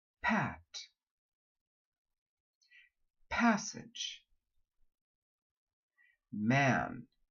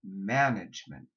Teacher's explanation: the N is nasal it makes you want to bring that vowel up too high remember we are co-articulating sounds complete the vowel then move up